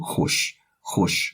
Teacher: the H with the H-O is like a little bit rounded here because of the O, hosh, which is cactus.